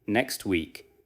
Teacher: Many learners struggle because next ends with several consonant sounds and week begins with another consonant. They may overpronounce every sound, pause, and then begin week.